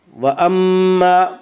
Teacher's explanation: میم مشدد غنہ ہوگا، غنہ کی مقدار 1 الف ہے۔